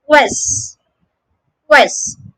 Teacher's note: The first syllable is made with a k combined with a w sound by rounding your lips.